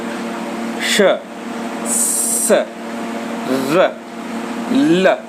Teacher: दांत और मसूड़ों को हमारी जीभ स्पर्श करती है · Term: वत्सर्य